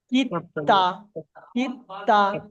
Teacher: দালটা কিন্তু পড়া হলো না, দেখলেন দালটা কিন্তু পড়া হলো না।